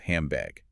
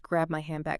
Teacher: First, it drops a sound, which we'll discuss next, and then it assimilates. The N feels the gravitational pull of the B in bag, and it morphs. So handbag becomes hambag, H-A-M-B-A-G.